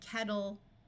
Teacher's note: when English speakers are speaking quickly the Double T sound here often sounds more like a d